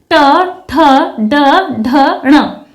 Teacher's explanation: जब हम इन वर्णों का उच्चारण करते हैं तो फेफड़ों से निकलने वाली जो प्राणवायु है वो कैसे स्पर्श करती है? मूर्धा को स्पर्श करती है। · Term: मूर्धन्य वर्ग